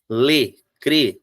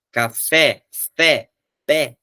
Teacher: Lê, crê, som fechado. Café, fé, pé, som aberto.